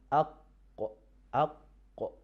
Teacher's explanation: So letter qaf, we pronounce letter qaf from the closeness or connecting of the root of our tongue with the soft palate.